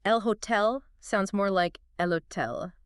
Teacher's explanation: the H in Spanish is silent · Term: stealthy H